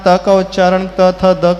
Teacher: त थ द का उच्चारण कर दांतों का प्रयोग होगा